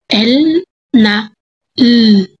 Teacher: Ikaapat ay ang paggilid. Ang hangin ay lumalabas sa mga gilid ng dila sapagkat ang dulong dila ay nag ay nakadikit sa punong gilagid.